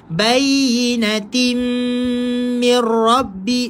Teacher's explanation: Idgham ma'al gunnah. Masukkan dekat mim.